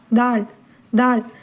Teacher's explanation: நாக்கினுடைய அந்த நுனி பகுதி முன் மேற்பற்களை அழுத்தமாக தொட வேண்டும். குரல் வந்து வல்லோசையுடன் ஒளிக்க வேண்டும்.